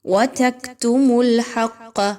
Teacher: حرف جلالہ جو اللہ کا حرف ہے اس سے پہلے جو اگر لیٹر پر پیش یا زبر آ جائے تو پھر اس کو پر پڑھا جاتا ہے، ادروائز تمام طرح کی جو لام آ جاتی ہے قرآن پاک میں تو اس کو باریک ہی پڑھا جاتا ہے۔ ہا اور قاف کو مضبوطی کے ساتھ ملائیں گے، قاف کو موٹا کر کے پڑھیں گے، ایک تو آلریڈی وہ موٹا حرف ہے اور اوپر سے تشدید ہونے کی وجہ سے۔